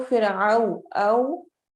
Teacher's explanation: फिरऔन औ में हम वाव लीन करेंगे, तो हम इसको फिरऔ औ, हमारे होंठ गोल होंगे